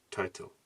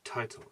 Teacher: breath escapes with audible friction as in title there is written the first T is aspirated